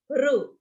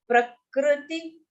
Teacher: So it should neither be pronounced as ra nor pronounced as ru. I mean, you don't have to pout your mouth. You have to say a slight u sound